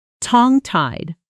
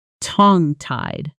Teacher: The stress lands on tong and the two words blend together almost like one word when spoken quickly.